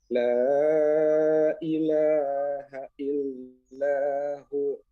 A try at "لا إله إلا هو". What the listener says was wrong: Kurang panjang. La ilaha illahu.